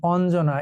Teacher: ন এবং জ এর মতো, একটা দন্ত ন এবং একটা জ, এটা উচ্চারিত হয় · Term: যুক্ত ব্যঞ্জন